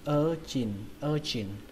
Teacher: Còn cái từ thứ hai này các bạn đọc là urchin, urchin, trọng âm của nó rơi vào âm đầu tiên, âm ơ, urchin, và âm chờ này là âm chờ bắn hơi các bạn nhé, urchin, urchin, sea urchin, sea urchin.